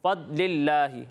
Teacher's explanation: ضاد میں جو ہے وہ آواز لوٹتی ہوئی محسوس نہیں ہوتی